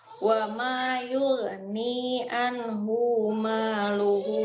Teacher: Awas, hu-nya jangan panjang.